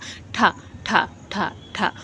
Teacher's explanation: दांत से हटके और तालू से पहले जब आपकी जीभ टच करती है तो वो क्या हो जाता है मूर्धा हो जाता है